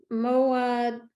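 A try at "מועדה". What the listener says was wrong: It is moadeh. Very good reading. It's a hard word.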